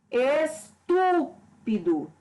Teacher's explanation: a sílaba tônica aqui, que eu pronuncio com mais intensidade, é a antepenúltima, é a sílaba tu. Como eu já disse, as palavras que tem na sílaba tônica antepenúltima sílaba mais forte, ela sempre é acentuada.